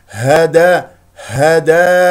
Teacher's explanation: هي باهتزاز الاوتار الصوتيه من اقصى الحلق